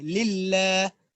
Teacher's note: ٹھیک ہے، اور للہ میں دیکھیں دو لام ہے، ایک لام کے نیچے زیر ہے اور جو دوسرا لام ہے جس پر تشدید ہے اس کو ہم باریک کر کے پڑھیں گے